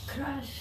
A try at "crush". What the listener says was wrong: That's it. This is tough for Russians especially, and you've done a great job with it.